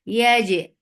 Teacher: this qalqala is very crisp and very sharp because it is majhura letter. There should not be any escape of sound breath here.